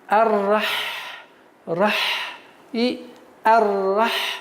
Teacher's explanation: звук Х является фрикативным звуком, то есть при произношении нужно струить воздух, чтобы продолжалось идти.